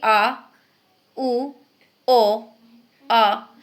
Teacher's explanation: जिन स्वरों के उच्चारण में जीभ का पिछला भाग ऊपर उठता है उन्हें हम कहते हैं पश्च स्वर।